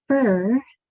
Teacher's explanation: that F has to remain only air the r gets its own sound no sound in F at all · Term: voiceless